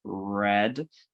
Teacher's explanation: our tongue is coming close to that alveolar ridge for you know words like red but it's not making total um contact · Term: american r sound, American R sound